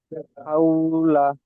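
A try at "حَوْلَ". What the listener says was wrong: হাউ, টান হয়ে যাচ্ছে। হাউলা।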